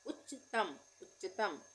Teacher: उच्चतम में भी आधे च का उच्चारण हो रहा है फिर पूरे च का